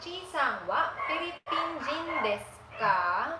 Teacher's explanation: since it's a question, we need to end it in with a rising intonation